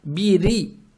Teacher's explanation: Учитывая то, что у буквы ра огласовка касра, букву ра произносим мягко. То есть бири.